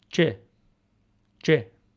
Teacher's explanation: using an unaspirated T sound plus a sh sound instead of a zh sound